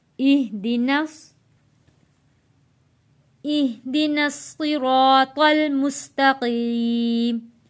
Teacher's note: इहदिनस, नून जुड़ेगा स्वाद के साथ, क्योंकि स्वाद के ऊपर तशदीद है। यहाँ एह नहीं पढ़ना, इह पढ़ना है।